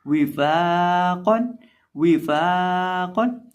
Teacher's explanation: और फा का क्या तरीकाकार है मैंने जिक्र किया था, निचले होंठ का वस्त जब सामने वाले ऊपर के 2 दांतों के किनारे से लगता है तो फा अदा होता है और इसको एक अलिफ के बराबर लंबा करके पढ़ेंगे और आखिर पे जो क़ाफ है उसको मोटा करेंगे। विफाक़न, विफाक़न।